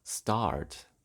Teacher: The start vowel cannot be lowered. Instead, it moves to the back and yields start.